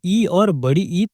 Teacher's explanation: तालु मतलब मुंह के ऊपरी हिस्से का वो कठोर भाग जहां जीभ छूती है। इन स्वरों को बोलते समय ध्वनि तालु से निकलती है। जैसे जीभ तालु की ओर उठती है। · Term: तालव्य स्वर